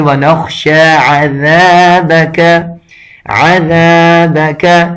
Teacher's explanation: اب اکثر اس میں بھی غلطی یہی ہوتا ہے کہ اس کو زا کر کے پڑھتے ہیں، زا جس سے زے کا آواز نکلتا ہے، یہ بالکل یہ ذال جو ہے اس میں یہ والا زے کا آواز بالکل نہیں نکلنا چاہیے، وگرنہ یہ بھی لحن جلی میں سے آ جاتا ہے، بڑی غلطی میں سے آ جاتا ہے۔ · زبان کو اپنے دانتوں کے درمیان تھوڑا سا زبان کا سرا باہر نکال کر یہ ذال پڑھا جاتا ہے